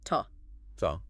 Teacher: we don't pronounce it as to we pronounce it more like t t yeah it's very short and quiet almost like a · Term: weak form